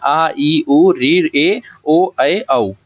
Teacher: इनमें दो मात्राओं का समय लगे वो क्या है दीर्घ स्वर कहलाते हैं